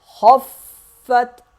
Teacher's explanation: خا کو موٹا پڑھیں گے، فا کو سخت پڑھیں گے، تا ساکن ہو جائے گا، خفت۔ خا فا سے ملے گا اور فا تا سے ملے گا، خفت۔